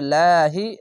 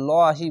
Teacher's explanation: আরেকটি বিষয় মনে রাখবেন, আল্লাহ লেখা থাকলে ডান পাশের অক্ষরটি দেখবেন যদি নিচে আসলে পাতলা করা হবে লাহি, এখানে যদি ওপরে আসতো তাহলে লহি মোটা করা হতো